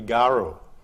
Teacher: Well, when we look at the neighbouring language Noongar, Louise Hirkus wrote it like this, which means it's got a glide R like in English, a long vowel, so it will be garu